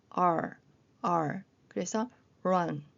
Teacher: R은 리을 비슷하지만 혀가 입천장에 닿지 않는게 주의할 점입니다. 랄라 할 때는 입천장에 혀가 닿혀.